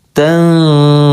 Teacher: hati-hati baca huruf nun ketika ketemu dha, jangan dibaca jelas tandurun tapi disamarkan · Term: ikhfa ausat